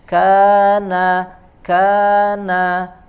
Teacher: Kaf ya mengeluarkan angin sedikit seperti Huruf ta